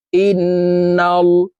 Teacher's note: হইলে সর্ব অবস্থায় নাকের বাঁশি থেকে গুন্নাহ করিয়া পড়িতে হয় তো আমরা এই হামজা তাশদি নুনের সাথে নাকের বাঁশি থেকে গুন্না করে পড়বো হামজা নুন জের ইন নুন লাম জবর নাল ইন্নাল লাম খারাবর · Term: ওয়াজিব গুন্না